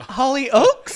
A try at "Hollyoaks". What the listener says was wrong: I've never heard that pronounced that way. Hollyoaks.